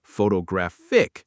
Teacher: Photographic, stress on the third.